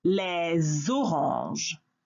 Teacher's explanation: the S of the le gets connected to the O of orange, and it sounds like a Z and an O together. Les oranges. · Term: liaison